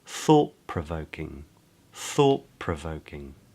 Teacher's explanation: the ’t’ at the end of ‘thought’ is actually pronounced as a ‘p’ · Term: assimilation